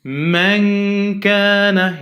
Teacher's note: So for example, when I say man kana, yeah, nun sakina here followed by kaf, and kaf belongs to light letters. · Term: real hiding with a light ghunna